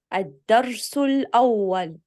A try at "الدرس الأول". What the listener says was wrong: نرقق الواو، لا نقول أول الأول.